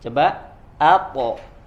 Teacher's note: huruf A-nya tipis, ya, kemudian huruf to-nya tebal, dan kemudian dia memantul, ya, karena punya sifat qalqalah.